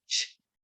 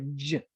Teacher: the only difference between ch and j is that my voice box is on for ju and it's off for ch